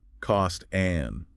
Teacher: Notice how cost flows into an and.